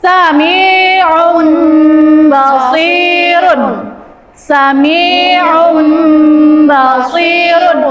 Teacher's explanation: mengganti atau merubah bunyi sukun, nun sukun atau tanwin menjadi huruf mim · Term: iqlab